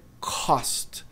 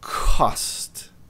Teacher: E tem aquele Azinho, tem o O que se transforma num leve A.